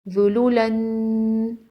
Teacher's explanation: تنوین کو غنہ کے ساتھ پڑھتے ہیں